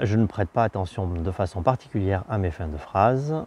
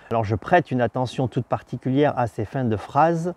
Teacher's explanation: avec ces prosodies qui sont descendantes, la fin de phrase est de moins en moins audible